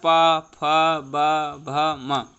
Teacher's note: होष्ठ की सहायता से जो है वो पा वर्ग के वर्ण बोले जाते हैं